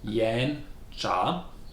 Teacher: Yan Cha is pronounced with two rising tone